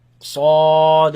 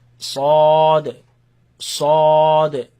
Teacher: So, the heavy sound, not the a, but o. In the back of the mouth, you're gonna hear that sound. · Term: heavy letters